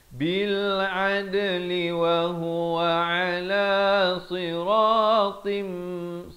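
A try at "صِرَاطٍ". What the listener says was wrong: si bukan sirasi jadi huruf sin di sini huruf sad masuk berserta dengan dua harakat barulah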